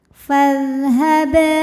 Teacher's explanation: Kemudian ada hukum qalqalah sughra karena huruf qalqalahnya asli ya dan ada di tengah bacaan kita. Maka dibacanya dipantulkan dengan pantulan yang kecil.